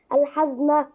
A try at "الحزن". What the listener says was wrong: الحزن كلها مفتوحة.